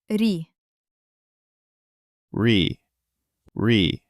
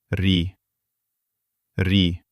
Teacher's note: make a very short, delicate, soft trill with the tip, as if a kitten is not growling but gently purring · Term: soft R sound